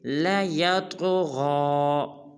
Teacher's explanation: لام کو نہیں کھینچنا اور طا کو پر بھی ادا کرنا ہے اور قلقلہ بھی